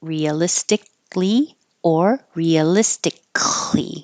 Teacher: realistically you might hear the K or you might not